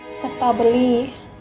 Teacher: Thailand people, they changed the letter R into the letter L,